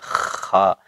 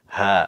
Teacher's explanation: Tidak terlalu tebal, kalau terlalu tebal nanti kayak kh, jadi kh. Jadi ini kalau bahasa Indonesia, kalau di bahasa Arab tuh mirip-mirip h. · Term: sound of h